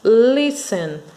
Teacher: Porque a sílaba final não é a mais forte. Não é o ten, que é a sílaba mais forte, sim o lis.